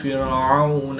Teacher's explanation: واو ساکن سے پہلے عین پر زبر ہے تو واو لین، اس کو لمبا نہیں کریں گے۔